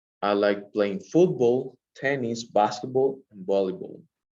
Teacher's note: If you can see, like the rising of the boys start in football, tennis, and basketball, and then the intonation falls on volleyball